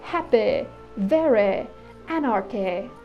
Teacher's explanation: But in the 1800s, these HAPPY words were pronounced with a short 'i' [ɪ] sound so they sounded like happih, verih, anarchih.